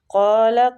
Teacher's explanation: قال قاف مستعلیہ پور پڑھیں گے۔